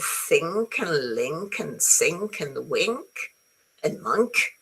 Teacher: So remember the ng sound um you have to press the back of your tongue on your soft pallet